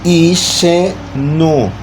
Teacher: E lembramos que a sílaba tônica está no I. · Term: paroxítona